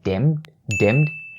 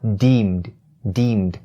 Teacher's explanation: its vowel is the long E sound, so don't say dimmed, dimmed, because if you say dimmed, it means a totally different thing.